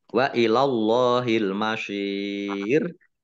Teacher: Shot kasroh, ya sukun, mat tobi'i, tetapi karena bertemu dengan huruf terakhir yang dibaca sukun karena wakof atau karena berhenti, maka menjadi mat arid lis sukun. Dibaca panjang boleh 6, 4, atau 2 harokat. · Allahnya dibaca tebal karena harokat di depannya fathah.